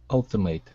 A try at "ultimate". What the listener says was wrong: Okay, now the ATE at the end is going to be an it sound. Instead of eight, ultimate.